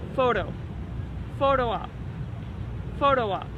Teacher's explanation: when you say the word photo make sure to use a flap T which sounds like a D sound